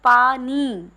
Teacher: जब हम पानी बोलते हैं तो हम क्या कहते हैं कि पा नी तो जो हम लोग पा नी बोल रहे हैं तो हम लोग नी वाले शब्द पर विशेष बल दे रहे हैं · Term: बलाघात